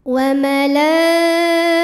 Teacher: Mad tabi'inya fathah panjang pada huruf lam, hamzahnya i satu kata yaitu kata malaikatihi. Maka huruf lam panjang boleh 4 boleh 5 harokat. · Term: mad wajib muttasil